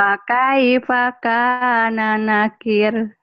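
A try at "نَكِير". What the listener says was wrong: Tapi panjang kirnya ujung nakir. Fakana nakir.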